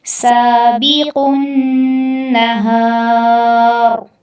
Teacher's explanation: اور النہار میں جب را پہ وقف کریں گے تو را پہ ساکن کی صورت آ جائے گی، اور ساکن کی صورت میں را پر ہم پر کر کے اس کی ادائیگی کریں گے۔